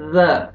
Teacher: ذال پڑھنا ہے، زا نہیں پڑھنا ہے، زور سے نہیں